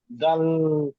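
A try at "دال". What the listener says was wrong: দাল নয়, দাল নয়, দাল, দাল, দাল বলে টান দিলে হবে না, দাল, লটা লাস্টে উচ্চারণ হবে, দাল। দাল, দাল নয়, দাল নয়, দাল, দাল।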